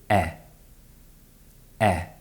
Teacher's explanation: this gives the sound its technical name the close mid front unrounded vowel · this name and symbol are a bit out of date because this sound is generally produced with the mouth more open in modern pronunciation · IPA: /e/